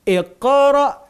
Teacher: Iqra bukan ikra tapi iqra ya, qalqalahnya.